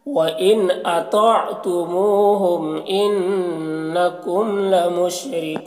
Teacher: ان لکم نون مشدد غنہ کے ساتھ پڑھیں گے · لمشرکون، یہاں پر را کو باریک پڑھیں گے، کون میں واو وقفی کی صورت میں مد عارض وقفی ہوگا